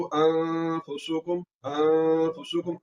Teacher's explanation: आवाज को नाक में ले जाकर कसदन लंबा करेंगे। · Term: इख्फा